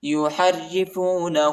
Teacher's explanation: ہاں پر الٹا پیش آیا ہے، اس کو ایک الف کی مقدار تک کھینچیں گے۔